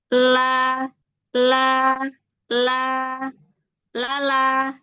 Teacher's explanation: Nempelnya itu digusi. Gusinya yang dekat dengan gigi atas.